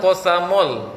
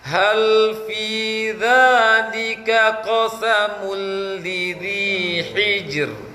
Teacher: Dhammah monyong bibir. Ketika lamnya tak boleh monyong bibir. Ketika lam tadi ya.